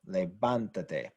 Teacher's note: now it is the third from last syllable that was stressed, we need to show that it's stressed by writing an accent mark over the vowel, levántate, because this is what's stressed.